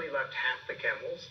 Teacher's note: when he's listing the number of camels we see that he's rising on each one because he's not done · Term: rising intonation